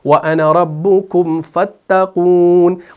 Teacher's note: वसल की सूरत में हम इस अलिफ को ड्रॉप कर देते हैं, इसको नहीं पढ़ते